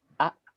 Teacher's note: benar-benar terputus aliran suaranya karena sifat huruf hamzah Dia memiliki sifat sidak yang aliran suaranya terputus perhatikan a sudah